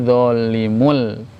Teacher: Tanwinnya hilang masuk ke lam. Tapi tidak disertai dengung. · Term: idgham bi ghairi gunnah